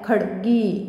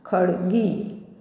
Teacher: गी दीर्घ आहे, त्यामुळे ड हलंत उच्चार आणि दीर्घ उच्चार गीचा